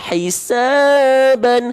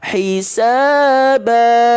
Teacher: maka vokal an-nya nggak kita baca an lagi, tapi menjadi a 2 harokat